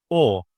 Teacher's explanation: It comes from my throat almost. It's from the back part of the mouth. So it's a back vowel.